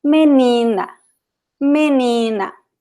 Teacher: You have 3 syllables here. Menina. And the stressed one is the one in the middle.